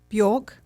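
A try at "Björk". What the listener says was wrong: You don't pronounce every letter.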